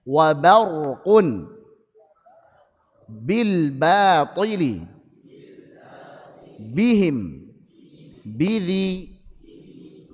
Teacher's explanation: tipiskan huruf ba atau hati-hati jangan menebalkan huruf ba